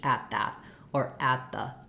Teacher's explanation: I'm going to just stop the T, keep my vowel short, and then release into the TH